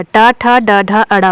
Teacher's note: इतने व्यंजन जो है मूर्धन्य से उच्चारित होंगे, यानी मूर्धन्य उच्चारण स्थान इन व्यंजनों का है